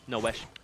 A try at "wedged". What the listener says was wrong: Wedged. Why are you saying a T? You're putting a T in there. But you're saying wedged.